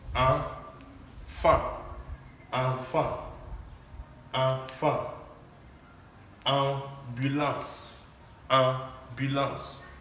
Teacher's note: We have the A or the A with the accent or tremor on top, and it is the A or the A sound pronounced nasally. You're supposed to pronounce these sounds here nasally.